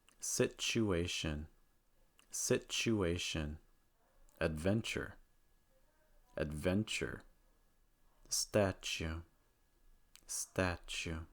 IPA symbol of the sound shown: tʃ